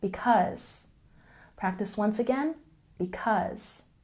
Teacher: we stress the second syllable in because